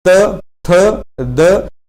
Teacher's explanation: आपकी जीवा दांतों के साथ टच होती है, तो ये आपके दंत्य वर्ण होते हैं